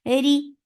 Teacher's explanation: Whenever ra is with kasra, it is light.